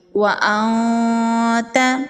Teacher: نون کی آواز کو ناک میں چھپائیں گے۔ وَأَنْتَ، وَأَنْتَ نہیں پڑھیں گے، وَأَنْتَ پڑھیں گے تو نون کا اظہار ہو جائے گا، تو یہ غلط ہے، نون کی آواز کو ناک میں چھپائیں گے۔ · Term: اخفا